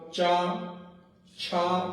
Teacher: आपकी जिह्वा जाकर तालव्य को जोर कर रही है, कुछ वहां स्पर्श कर रही है